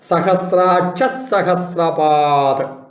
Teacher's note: സഹസ്രാക്ഷ കഴിഞ്ഞിട്ട് ഒരു ഇസ് ഉച്ചരിക്കണം, എന്നിട്ട് സഹസ്രാക്ഷ സഹസ്രപാദ്. സഹസ്രാക്ഷ കഴിഞ്ഞ് വിസർഗമാണ്, ആ വിസർഗത്തിന് പകരം ഇസ്സാണ് അവിടെ വരിക.